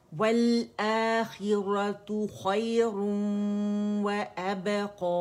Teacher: ادغام ناقص بالغنہ, اور اکمل ما تکون غنہ کریں گے